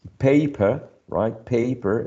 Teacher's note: Paper is also a two-syllable noun and it's stressed on the first syllable.